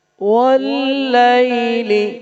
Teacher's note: جب واو کو پڑھتے ہیں تو لپس راؤنڈ کرتے ہیں، ہونٹوں کو گول کرتے ہیں، اور لائی میں یا ساکن ہے زبر کے بعد، there is یا ساکن after فتحہ، so that's why it will be soft، یہ نرم پڑھیں گے، لائلی.